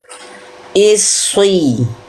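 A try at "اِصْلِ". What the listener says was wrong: Nah, jangan pakai monyong. Yang tebalnya karena pangkal lidah. Jangan monyong.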